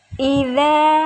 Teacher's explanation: ada alif sebelumnya fathah, maka hukum bacaannya adalah mad tabi'i, dibaca panjang 2 harokat